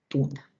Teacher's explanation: Es un oclusivo dental sordo, representado por la letra T en la palabra tuna